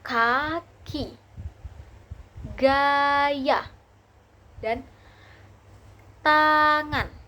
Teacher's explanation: dorseller ini adalah lidah bagian belakang menyentuh langit-langit lunak seperti ee kata seperti konsonan K dibaca ke ke geh, geh, dan eng. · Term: dorsovelar